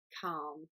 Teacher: So you don't have to say the L, you just need to say calm. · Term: silent